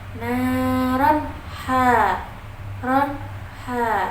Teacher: izhar halq yaitu huruf rnya kan berharakat fathah tanwin lalu bertemu dengan huruf ha Jadi dibacanya jelas dan tidak berdengung sama sekali lalu hamiah h-nya ini juga termasuk hii karena h-nya itu hurufnya